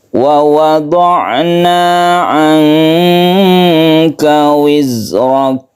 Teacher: Wa wada'na, nanya ini mat tabi'i, jangan terlalu panjang tapi cukup satu alif saja.